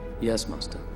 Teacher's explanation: Every time he says Master Yoda, it's a very kind of clear, precise ah.